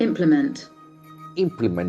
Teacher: The accent falls on the first syllable.